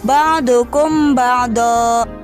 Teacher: penjelasannya apabila Memang mati bertemu dengan huruf ba maka Meme tersebut disamarkan ke dalam huruf ba disertai dengan suara dengung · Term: ikhfa syafawi